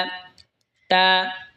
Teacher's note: তা জিহ্বার আগা সামনের ওপরের দুই দাঁতের গোড়ার সঙ্গে লাগা উচ্চারণ হবে তা।